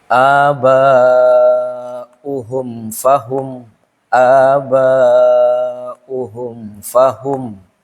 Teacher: karena disebut dengan izhar izhar itu kan bacaannya itu jelas gituah tidak ada dengung dan tidak ada samar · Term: izhar syafawi